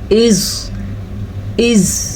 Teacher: زبان کی کروٹ جب اضراس علیٰ یعنی اوپر والی داڑھوں کی جڑ سے لگے تو اس سے زواد ادا ہوتا ہے. ٹھیک ہے، دائیں طرف سے نکالنا مشکل ہے اور بائیں طرف سے نکالنا آسان ہے.